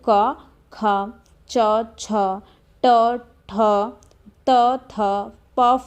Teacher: मुख से जो हवा बाहर निकलेगी उसमें कोई कंपन नहीं होगा · जिनके उच्चारण में मुख तक आने वाली वायु में कोई कंपन नहीं होता दिखे, वैसे व्यंजन को हम लोग आघोष कहेंगे। ठीक है, यानी तंत्रियों का एक दूसरे से दूर हो जाएगी।